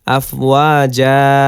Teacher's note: আফওয়াজ যা হয়েছে ওয়াকফ করার কারণে সমান সমান দিয়ে বুঝিয়েছে যে এক জবর বাদ হয়ে এখানে এক আলিফ টান হচ্ছে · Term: মাদ্দে এওয়াজ